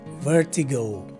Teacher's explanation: the primary stress is right in the beginning of the word and also a secondary stress in the third syllable the letter e takes a soi sound and the letter i